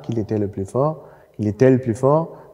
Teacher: Hier folgt ein Vokal, qu'il était le plus fort, qu'il était le plus fort. Da sehen Sie, das L von qu'il bleibt erhalten